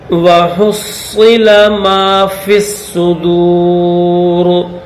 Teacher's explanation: فا کو ڈائریکٹ صاد کے ساتھ پلس کریں گے، یا اور یہ الف یہ لام یہ تینوں حروف نہیں پڑے جائیں گے